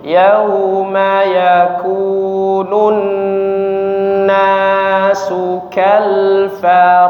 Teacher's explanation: Jangan lupa didengungkan ya. Nun bertasydid ya.